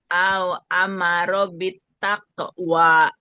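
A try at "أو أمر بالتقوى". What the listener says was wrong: Tako lebih bulat lagi. Au amarobit tako. Taqwa.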